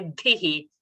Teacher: But we have to cut the sound and say dhihi and not drag it to fit our tune. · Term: rasva sound